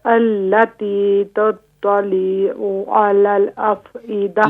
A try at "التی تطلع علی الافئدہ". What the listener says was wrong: لام کو مت کھینچیں، حرکات کو مت کھینچیں.